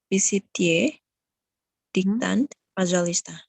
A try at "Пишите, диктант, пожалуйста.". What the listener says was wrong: Очень хорошо.